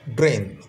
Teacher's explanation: এ এবং তারপরেরটা অর্ধ ই এর উচ্চারণ হবে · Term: ডিপ থং